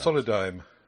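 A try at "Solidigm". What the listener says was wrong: Solidime? It's got a G in it.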